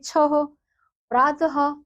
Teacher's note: है तो उससे बनने वाले शब्द कौन से हैं छ प्रातः जो विसर्ग है उसकी ध्वनि ह के रूप में प्रयोग की जाती है